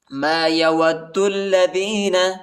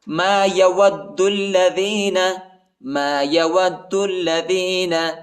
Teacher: واو کو دال کے ساتھ ملائیں گے، دال کو لام کے ساتھ ملائیں گے، الف نہیں پڑھا جاتا، الف کے اوپر حرکت نہیں ہے.